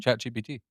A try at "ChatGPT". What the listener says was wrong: Sound like you're saying GBT.